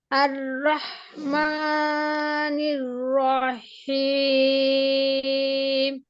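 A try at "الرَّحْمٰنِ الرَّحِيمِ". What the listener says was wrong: এই হায়ের মাখরাজটা আদায় করতে গিয়ে এই রটা হয়ে যাচ্ছে, রটা একটু দীর্ঘ হয়ে যাচ্ছে, টানটা আর কি। আর রহমানির রহিম। এই রটা সামান্য দেরি হয়ে যাচ্ছে। আর রহমানির রহিম, রহিম শুধু বলেন রহিম। রহিম, রহিম।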